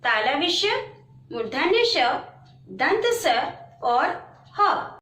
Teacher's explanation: इन वर्णों का उच्चारण करते समय हवा के रगड़ खाने से ऊष्मा से उत्पन्न होती है। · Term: ऊष्म व्यंजन